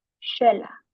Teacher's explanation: The letter X is pronounced as a SH sound, which usually connects to Mayan culture